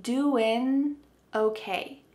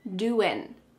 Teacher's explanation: What's happening with the G at the end? Doing. It's gone.